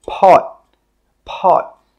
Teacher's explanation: When we say this word, we stop the air with that final T sound.